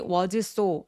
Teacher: s하고 s하고 만났으니까 한 번만 발음하기